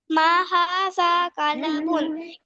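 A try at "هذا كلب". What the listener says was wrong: माँ किधर लिखा हुआ है बेटा हाजा कलबुन, कलबुन नहीं, ठीक है। लाम के ऊपर क्या है? सुकून है, तो इसको पढ़ेंगे हाजा कलबुन, ये एक कुत्ता है।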